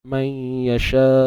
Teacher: Kita dah tak sebut dah makhraj nun ni. Makhraj nun dah tak ada, dia tak jadi man sebab dia dah masuk dalam ya. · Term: idgham bi gunnah